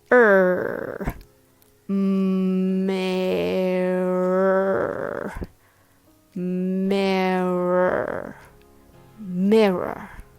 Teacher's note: There are 3 R's in the spelling and there is 1 O. But just ignore the letter O and make sure you growl with the heavy American R sound